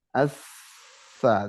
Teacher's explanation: Nah bedanya di sifat. Kalau sa memang punya hamas, jadi udaranya harus berbunyi. Kemudian rokhawah, suara udara tetap mengalirnya nggak terputus.